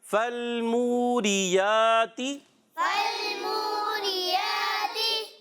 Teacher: واو مدہ، اس کو جو ہے ایک الف لمبا، پھر کھڑی حرکات، اس کو بھی ایک الف کھینچ کر پڑھیں گے